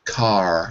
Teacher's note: We don't use the lips. It's kind of just open. Car, R, R, and your tongue curls back in your mouth too. It doesn't touch anything. It just curls back.